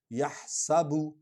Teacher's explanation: سین سیٹی کے ساتھ آواز نکلتی ہے